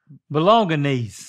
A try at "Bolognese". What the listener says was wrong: Well, there's no N after the O, or it's G. But after the G, it's the N.